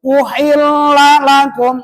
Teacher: Ha H kecil dari tengah-tengah tenggorokan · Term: Ha kecil